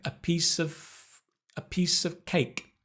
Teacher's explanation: the “f” almost disappears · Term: connecting